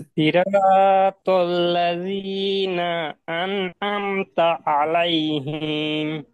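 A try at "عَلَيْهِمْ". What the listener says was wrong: হিম, তাড়াতাড়ি পড়তে হয়, হিম।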